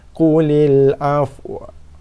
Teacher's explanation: So bila matikan waw, kita seolah-olah nak mengeluarkan bunyi waw yang berbaris atas, tapi dalam keadaan separuh jalan, sekerat jalan, tergantung di pertengahan jalan. Afwa. Sekarang itu saja bunyi dia. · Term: waw sakinah